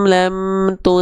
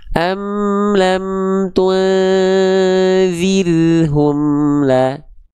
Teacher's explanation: ketika samar dengungkan huruf konsonan n tadi, nah harus sambil mulut dan lidah kita bersiap-siap melafalkan keadaan huruf dalnya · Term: ikhfa